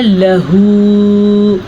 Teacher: یہاں پہ ہمارے پاس ہا ہے اور الٹے پیش کے ساتھ ہے، اس کو ہم کھینچ کے پڑھیں گے۔ یہ لکھا ہوا ہے لہو، اب بعض لوگ کیا پڑھتے ہیں لہو، یہ بڑی غلطی ہے۔ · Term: چھوٹی مد